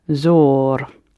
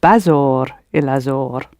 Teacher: the middle consonant is not clearly audible. It's turned into a long or. But z and r, the first and the third, are audible.